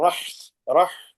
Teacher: اگر ہا کو کچھ زیادہ ہی تکلف سے پڑھیں تو ہا کے بجائے وہ خا کی آواز آنے لگتی ہے